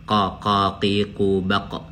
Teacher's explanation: Makhrajnya, tempat keluarnya adalah posisinya pangkal lidah bertemu dengan langit-langit bagian dalam. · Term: Qaf